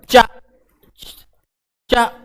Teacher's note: जब चा का उच्चारण करते हैं तो जीभ जो है तालु में चिपक जाती है, तालु में चा चा, तो ये तालव्य व्यंजन है।